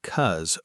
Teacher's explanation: Because very commonly reduces to just cuz or even cause, dropping the first syllable entirely in casual conversation.